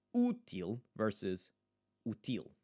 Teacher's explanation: Ends in ul, but il would be the accentuated syllable. We want to make sure that the first syllable's the one that we are emphasizing.